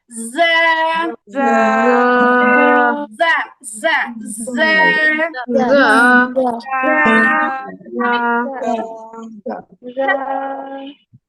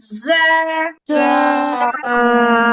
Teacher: জিহ্বার আগা, এই জিহ্বার আগাটাকে সামনের নিচের যে দুই দাঁতের পিছনে পুশ করবেন, ধাক্কা দিবেন